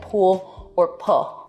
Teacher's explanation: an L turning into a vowel in a word like pool or pull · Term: L vocalization